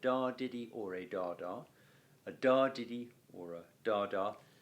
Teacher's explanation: the first two feet can either be dactyls or spondees